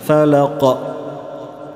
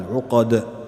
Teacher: Because there's a qaf and we're stopping on the qaf, therefore we give it an echo sound, right? A vibration sound. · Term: Qalqala